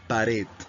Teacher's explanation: la mayor fuerza de voz, como te darás cuenta, es en la última, aret. En la palabra lingüística ya la tilde te orienta dónde está la mayor fuerza de voz.